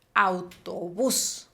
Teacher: La mayor fuerza de voz está recayendo en la última sílaba.